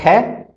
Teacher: इसका स्पृष्ट विवार श्वास अघोष और महाप्राण